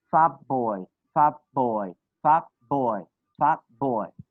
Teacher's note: You will change T sound to P. Why? Because after T sound you have B sound.